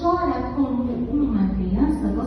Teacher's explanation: quando eu digo chora como uma criança, eu não escuto mais o mu de como. Chora como eu já vou para a sílaba seguinte, eu engoli o O de como. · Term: elisão